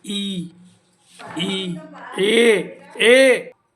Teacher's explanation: स्वर उच्चारण जीभ के आगे भाग से होता है। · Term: अग्र स्वर